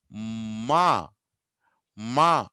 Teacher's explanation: గాలి నోట్లో నుంచి రాదు, ముక్కులో నుంచి వస్తుంది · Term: నాజల్స్